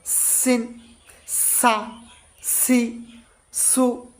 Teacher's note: হতে শীষ সহ পাতলাভাবে বাধবে ঝা তারপর হচছে সিন সিন হল সামনের নিচের দাঁতের আগা হতে শীষ সহ পাতলাভাবে বাধাবে সিন সা সি সু এরকম তারপর হচ্ছে সদ স সামনের